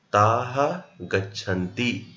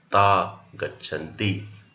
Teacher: visarga is followed by ga, visarga is dropped